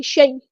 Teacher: یا لین آئی ہے تو نرمی سے موڑیں گے